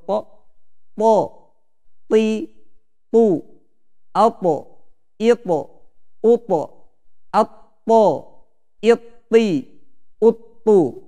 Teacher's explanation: Tebal ya, karena dia pangkal lidah naik ke langit-langit, yaitu isti'la. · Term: huruf to